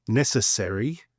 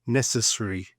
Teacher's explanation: in the UK we tend to pronounce more of the vowels and in the US they tend to sort of flatten them, swallow them, reduce them. So in the UK we would pronounce this more like necessary and in the US necessary.